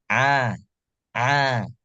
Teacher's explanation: dalam kalau dia sedang keadaan sukun bacanya ba ba nah begitu huruf ain dalam keadaan berharakat maka dibaca pita suara terbuka